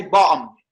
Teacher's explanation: But in British, you just pronounce it. If you want to sound like Cockney, you just say bottom. Don't T. Without pronouncing the T. Just make it bottom.